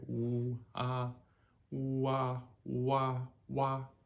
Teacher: It's oo and ah. And then we just bring them together very quickly. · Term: UA